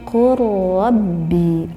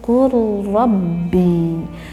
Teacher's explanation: Lamnya tidak tampak terdengar jelas oleh kita